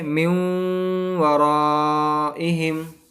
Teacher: تنوین نون ساکن کے بعد اگر یا واو میم نون یرملون، یہ 6 ہیں، یا را میم لام واو نون، ان میں سے اگر 4 آ جائیں یا واو میم نون تو ہم کو گنہ کے ساتھ ملا کر پڑھنا پڑتا ہے۔ تو یہاں پر نون ساکن کے بعد واو آیا ہے، تشدید والا واو آیا ہے، تو اس وجہ سے ہم کو یہاں پر ملا کر گنہ کے ساتھ پڑھنا ہے۔ تو پڑھیں گے من ورائہم، اس طرح گنہ کے ساتھ پڑھیں گے ہم، اس کو ادغام مال گنہ کہتے ہیں۔